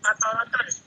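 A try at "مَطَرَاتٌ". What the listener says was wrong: Panjang-panjang. Matorot. Ini ada alifnya.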